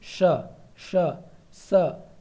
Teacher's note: इन सब में अंदर से हवासी निकलती है यानी कि ऊष्मा निकलती है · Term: ऊष्म व्यंजन